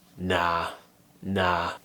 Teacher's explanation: I'm pushing my tongue forwards and down and doing an ah sound, but I'm making it a bit longer.